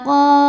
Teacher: Qo dihukumi dengan mad thobi'i zahiri. Sebab ada alif yang didahului baris fathah. Maka huruf qof panjang dua harakat.